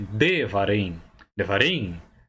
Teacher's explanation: Note que você começa com um chevá sonoro.